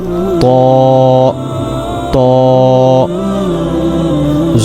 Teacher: এটার নাম ত, মোটা ত। জিহ্বার আগা থেকে মোটা করে পড়তে হয়